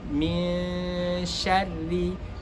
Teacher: huruf shin di sini min sya itu tidak termasuk huruf tebal sehingga bentuk dari ikhfanya itu adalah tidak termasuk tebal